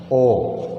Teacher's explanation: ओ, औ, कंठ और ओष्ठ। ओ, कंठ से ध्वनि आ रही है और साथ में होठों से इनका उच्चारण हो रहा है, इसलिए को कंठ और ओष्ठे यानी कंठोष्ठे बोलते हैं इनको।